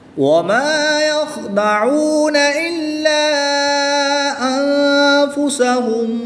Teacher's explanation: نون ساکن میں اخفا ہوگا، یعنی غنہ کر کے پڑھیں گے۔ وقف کی حالت میں یہاں پر مد عارض ہوگی، یہاں پر بھی 2 اڑھائی الف تک کھینچ کر پڑھیں گے۔